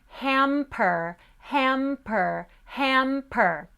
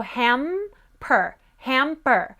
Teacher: So try the word hamper, hamper, hamper. When we put the M next to the P, which are both bilabial sounds using the lips, if you can explode the P very clearly, that means that your soft palate has closed very strongly. But if you can't, then it means it hasn't, okay?